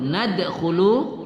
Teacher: dal babaris sukun, kita membaca qalqalah di situ, wa idh qulna nadkhulu khu, ingat posisi makhraj kha, kha khi khu pada makhraj halqi ya, halqi bagian depan ya.